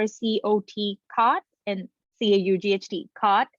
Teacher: in almost all parts of the US, you produce these two vowel sounds the same. But if you are from, say, Illinois or Michigan, the Great Lakes area, that's really where you have two different vowel sounds, right?